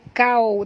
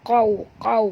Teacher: Jadi hukumnya izhar syafawi, bacaannya terang tanpa dengung. Qawmum, qaw huruf qaf tebal, jangan baca kau tapi baca qaw